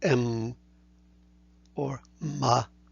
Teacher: M or Ma as the labial nasal